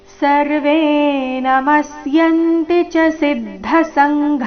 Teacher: ವೇದೀರ್ಘ ಸರ್ವೇ ನಮಸ್ಯಂತಿಚ ಸಿದ್ಧ ಸಂಘ ನಮಸ್ಯಂತಿಚ ಸಿದ್ಧ ಎಲ್ಲ ಅಕ್ಷರಗಳು ರಸ್ವ ಮುಂದೆ ಸಂಘನಲ್ಲಿ ಕೊನೆಗೆ ಘಾಪ್ರಾಣ ದೀರ್ಘ ಸರ್ವೇನಮಸ್ಯಂತಿಚಸಿದ್ಧ ಸಂಘ ನೋಡೋಣ ಪೂರ್ತಿ ಶ್ಲೋಕ ಮೂಲಗೀತೆಯ ಪ್ರಕಾರ ಅರ್ಜುನ ಉವಾಚ ಸ್ಥಾನ ಷಿಕೇಶತವಪ್ರಕೀರ್ತ್ಯ